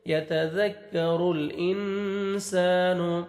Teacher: نون ساکن کے بعد حروف اخفا میں سے سین ہے، نوز میں ساؤنڈ لے کے جائیں گے. انسا، الف مدہ، الف سے پہلے زبر، ایک الف کے برابر سین کو آپ نے کھینچنا ہے.